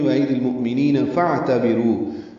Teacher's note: فا کو اعتبروا کے عین سے ملا دیں گے، عین ساکن پہ اظہار ہے ، رو واو مدہ